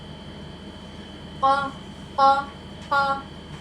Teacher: तो हमारा क़ाफ मोटी आवाज़ में अदा हुआ क्योंकि ये हरूफ मुस्तालिया है। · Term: मोटा हर्फ